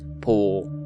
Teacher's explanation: the vowels contract into a long vowel, leaving us with the modern Maori word po